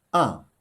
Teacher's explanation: The fourth tone is a. It starts at the high pitch, then goes straight down to the lowest pitch. It's called the falling tone.